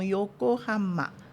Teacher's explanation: não tem essa nazalação no meio da sílaba